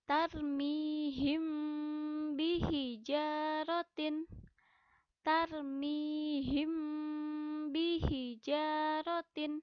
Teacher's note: mim sukun yang bertemu dengan huruf ba baik maka cara membacanya mim sukun dibaca samar di bibir disertai dengan dengung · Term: ikhfa syafawi